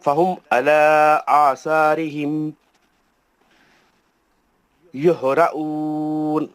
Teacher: جو لوگ کھینچ رہے ہیں میم کو سب غلط کر رہے ہیں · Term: میم ساکن